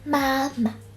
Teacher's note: the fifth and neutral tone is marked as nothing above pinyin, but can actually be pronounced a bit like a short breath